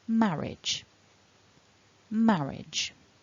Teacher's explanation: So the blue dot shows us the break in syllables, and the mark on the top left in blue tells us that the first syllable is the strong, the stressed syllable. Marriage.